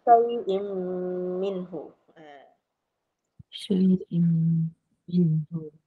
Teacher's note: Idgham ma'al gunnah. Kita dengung 2 harakat lah.